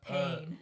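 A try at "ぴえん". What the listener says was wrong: And it's not pain, it's peon. It's not even pain either because it's an I and then it's an A.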